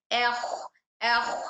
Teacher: इस्तला की वजह से ख को हम मोटा कर देंगे